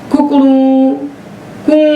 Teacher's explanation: एक छोटा ऊ बोलता था कु, फिर ऊ बोलता था बड़ा ऊ, और कू ये प्लुत बोलता था। तो ह्रस्व दीर्घ प्लुत तीनों प्रकार का ऊ बोलता है मुर्गा।